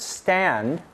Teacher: with the tongue at the alveolar Ridge so here's what happens the tongue raises the tip of the tongue touches the alveolar Ridge and the sides of the tongue cup up around the hard palate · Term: alveolar stop